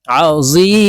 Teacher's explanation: তিন আলিফ টেনে মিমকে সাকিন করে ফেলতে হবে কারণ মদের হরফের বামের হরফে ওয়াকফু হইলে মধ্যে আরজি তিন আলিফটা